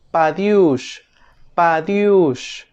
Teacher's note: la d en fonética se le conoce como oclusiva dental o alveolar Sonora